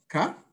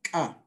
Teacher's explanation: This glottal stop is basically just a pause in between the consonant and the vowel. And you can actually do it very easily.